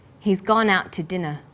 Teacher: We stress he's, gone, out, and dinner. The to is unstressed. When we link out, which is stressed, and to, which is unstressed, the final t sound in out is held slightly longer.